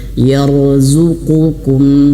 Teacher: Ya, kemudian ra-nya tebal. Ra ini kita tebalkan, pangkal lidahnya naik. Jangan sampai mulutnya berlebihan manyun.